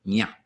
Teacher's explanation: A tilde over an N indicates a little body English nya. So the middle of your tongue up against the middle of the roof of your mouth comes a kind of curled nasal sound.